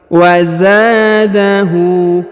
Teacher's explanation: Perhatikan huruf za dipanjangkan 2 harokat karena di depannya terdapat alif. Wa zadahu. Kemudian huruf hu dibaca panjang 2 harokat karena di atasnya terdapat harokat u terbalik.